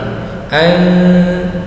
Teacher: Apabila ada nun sukun atau tanwin bertemu dengan salah satu huruf yang 15 tadi, maka hukum bacaannya menjadi ikhfa hakiki, dibaca mendengung, samar panjang 2 harokat. Samar artinya adalah mendengung di antara huruf n dan eng, di antara huruf n dan huruf eng, bukan an juga bukan an, tapi di antara n dan eng, an, ya, 2 harokat.